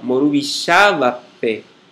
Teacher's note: quando recebe a ênclise P interrogativa, isso não altera em nada a posição da sílaba tônica na palavra